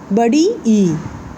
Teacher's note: जब बड़ी ई बोलेंगे तो जो हमारा जीभ है, जो हमारा जिह्वा है वो आगे की तरफ आएगा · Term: संवृत